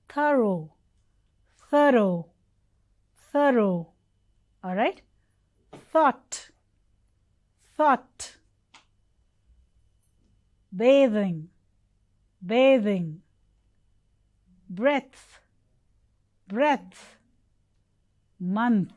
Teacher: the tip of the tongue is placed out outside the upper and lower teeth